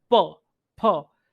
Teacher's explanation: एक होठ दूसरे होठ को पूरा पकड़ करके तब खुल रहा है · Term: स्पृष्ट